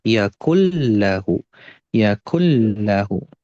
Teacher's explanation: kalau nun sukun ketemu lam itu idghamnya memang dia idgham, tapi idghamnya bila gunah, tanpa gunah. Jadi cukup diayun aja. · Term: idgham bila gunnah